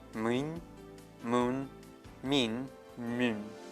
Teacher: These varieties in pronunciation are connected with the vowel harmony.